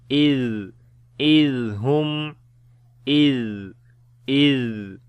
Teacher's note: rakhawa quality means the continuation of your sound